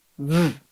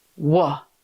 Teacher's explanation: V. Teeth plus lip. V. W. Rounded lips, no teeth.